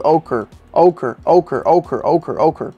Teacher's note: you want to stress on the first syllable